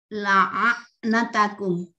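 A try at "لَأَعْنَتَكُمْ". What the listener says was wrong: Itu hamzah Bu, la a natakum hamzah. La a natakum. Belum keluar ainnya Bu. La'a'natakum. Itu masih ain, masih hamzah itu Bu. La'a'natakum hamzah. La'a'la'a'natakum. Bunyi ainnya belum kedengaran Bu. Bunyi ain itu a. Bunyi ainnya a gitu. La'a'la'a'. La'a'natakum.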